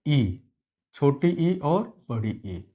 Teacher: छोटी ई और बड़ी ई यह दोनों ही तालू से उच्चारित होते हैं